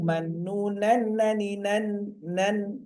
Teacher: Nun keluar dari ujung lidah dan mendekati langit-langit atas.